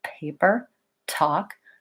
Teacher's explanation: to say these sounds with out a puff of air so when I say words like paper and talk paper talk there's a puff of air that comes